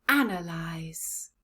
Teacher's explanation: final syllable la lies let's put the sounds together analyze analyze where is the stress in this word analyze yes it's right at the beginning